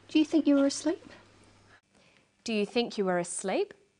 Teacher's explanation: her voice goes up at the end of the sentence we call this a rising tone